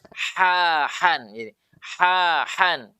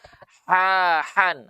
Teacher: rasakan keluarnya di sini ya dan bukan di hidung Ya itu Jadi keluarnya di tenggorok tengah-tenggorokan dan bukan di hidung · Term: huruf H